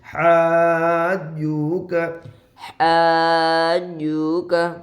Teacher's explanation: حا الف جیم زبر مد حاج, حا الف جیم زبر مد, حا الف جیم زبر مد حاج, جیم واو پیش جو, حاجو, کاف زبر کب, حاجوک. حرف مد کے بعد والے حرف پر تشدید ہے اس لیے مد لازم ہوگا. جیم کے اوپر تشدید ہے, واو کے اوپر جزم ہے, جزم والے حرف کو پیچھے والے واو ساکن سے پہلے پیش ہے, کاف کے اوپر زبر ہے.